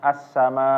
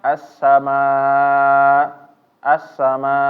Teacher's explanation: ini harus ditekan di akhirnya ya di hamzahnya jangan membacanya assama assama kalau enggak ditekan tapi dia ditekan Karena